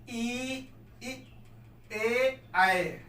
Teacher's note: जीभ के आगे वाले भाग से इसको बोला जाता है, इसलिए इसे क्या कहते हैं, अग्र स्वर कहते हैं